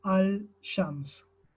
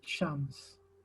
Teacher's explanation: el punto de articulación de donde ponemos la lengua está muy próximo entre las dos letras y tienden a hacerse una para que sea más fácil pronunciarlo sobre todo cuando uno habla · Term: asimilación